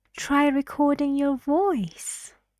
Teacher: the last content word which is try recording your voice voice voice is the most important stressed word in that sentence · Try recording your voice. It's going up. It's friendly.